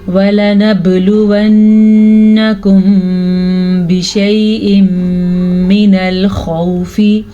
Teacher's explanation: खौ को पूर पढ़ेंगे और वाव साकिन से पहले ज़बर है तो ये वाव लीन है। इसे हम बग़ैर लंबा किए बग़ैर खींचे पढ़ेंगे और खौ को पुर पढ़ेंगे।